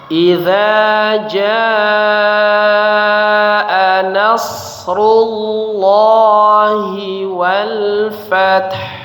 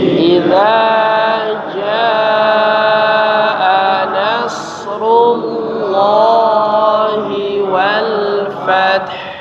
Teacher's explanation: huruf jaa ya dipanjangkan 5 harakat ya